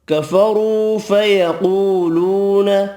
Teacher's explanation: را پیش کی وجہ سے پر پڑھیں گے، قاف حروف مستعلیہ پر پڑھا جائے گا، واو مدہ 3 ہے، تینوں ایک الف کی مقدار میں کھینچ کر پڑھیں گے۔